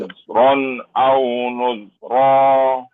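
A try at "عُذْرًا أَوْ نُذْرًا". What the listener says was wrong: Belum tarik, belum tarik. Ah, belum tarik, tarik dulu. Ron.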